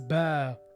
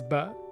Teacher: So after the fatha, add alif to stretch the ah into ah. So it's a long ah. For example, B plus alif is ba, like father. It's longer than the B plus fatha. B plus fatha is ba.